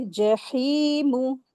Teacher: या मदिया का rule apply हो रहा है, हा को 2 हरकत खींचेंगे